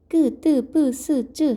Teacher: 그 다음에 다시 각각의 파열음, 파차름, 마차름을 소리의 세기에 따라 특별히 힘을 주지 않고 내는 소리, 예사 소리, 짜내는 소리, 끄, 뜨, 뿌, 스, 쯔 하는 된 소리